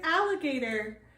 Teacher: The first A is a short vowel sound, and the second A is a long vowel sound.